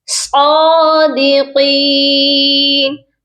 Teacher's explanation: صاد کو بھی موٹا کر کے پڑھیں گے اور قاف کو بھی موٹا کریں گے اور اس کے ساتھ یا مدہ ہے، اس کو ایک الف کے برابر لمبا کر کے پڑھیں گے.